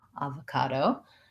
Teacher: ah we actually don't say that o as an o so avocado has first syllable stress vowel ah at first and then this o is gonna say schwa sounds like uh · vowels and then the o in the middle says uh avocado secondary stress probably on the ca and primary on the ah